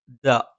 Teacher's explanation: നാവിന്റെ അറ്റം മേലെ മുൻപല്ലിന്റെ മുരട്ടിലാണ്